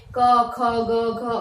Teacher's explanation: અહીંયા કંઠમાંથી પ્રયત્ન થાય એટલે કંઠ્ય વર્ણો ઉત્પન્ન થાય છે